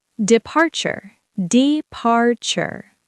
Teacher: Three syllables. Stress on the second.